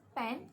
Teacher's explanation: there was no air escapes since bilabial stop sound, which is P, will block the air stream